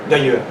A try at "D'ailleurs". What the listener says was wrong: Non, trop petit. Ouvre-le d'ailleurs.